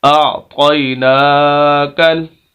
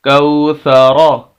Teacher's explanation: راب کو بھی موٹا پڑھنا ہے اور ادھر سے طا کو بھی موٹا پڑھنا ہے۔